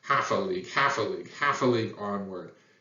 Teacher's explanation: the first syllable is stressed and then the next two are unstressed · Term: Dactyl